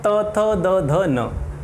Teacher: त बोलते समय आपकी जीभ जो है वो आपके दांतों से स्पर्श कर रही है और आप अपने जीभ को बिना दांतों से स्पर्श किए हुए त का उच्चारण नहीं कर सकते हैं। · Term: दंत्य ध्वनियाँ